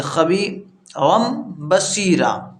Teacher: با حذف ہو گیا اور میم کی آواز آنے لگی